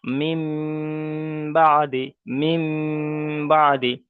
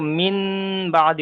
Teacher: নুন সাকিনকে মিমের দ্বারা পরিবর্তন করে একালি পরিমাণ গুন্না সহ পড়তে হবে